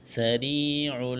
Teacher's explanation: سین میں سیٹی کی آواز پیدا کریں گے